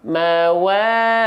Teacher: Mat thabii itu harus dibaca Dua harakat